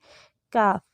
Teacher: اقصی لسان جب اوپر اٹھے اور تالو کے نرم حصے سے کچھ آگے، بالکل آگے نہیں، تھوڑا سا آگے تالو کے سخت حصے سے ٹکرائے تو کاف ادا ہوتا ہے۔ یہ موٹا نہیں پڑتے اور باریک آواز ہوتی ہے اس کی، کاف۔